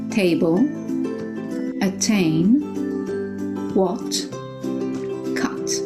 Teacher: in British English they always pronounce the T in a very listenable way in a very audible way